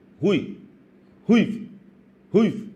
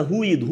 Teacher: Olha como o I de ruivo é fraco, é breve, é quase pronunciado. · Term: ditongo